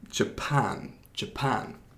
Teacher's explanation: 그 두 번째 syllable를 강제하는 거예요